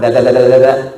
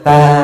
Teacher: Da dengan ta, tempatnya sama.